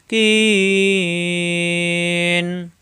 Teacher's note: কি জিব্বার গোড়া থেকে